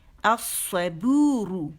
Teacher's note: صاد موٹی ہے، اگین شمسی لیٹر ہے، اس نے لام تعریف کو اپنے اندر مرج کر دیا